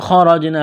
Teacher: ہے، را کو جیم کے ساتھ ملائیں گے، پلس کریں گے، جیم ساکن ہے، قلقلہ کریں گے جیم پر ، الف سے پہلے زبر ہے، ایک الف کے برابر کھینچنا